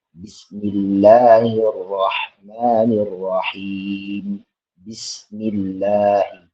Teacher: lam tarqiq, yaitu lam yang dibaca dengan tipis